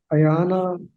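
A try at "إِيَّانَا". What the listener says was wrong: یہ جو نا ایانا نہیں ہوگا، ایانا، یا کے اوپر تشدید ہے، اس کو تشدید یا کے ساتھ پڑھیں گے، ٹھیک ہے.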